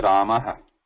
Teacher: When I say Ramaha, Rama, Rama, the difference is, if you notice, when I say Ramaha, there is a vibration in it, which is called a nada.